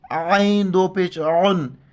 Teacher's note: عین کو گلے سے ادا کرنا ہے